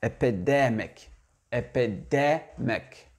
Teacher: Donc, l'accentuation, elle se fait sur la syllabe du milieu. Epidemic.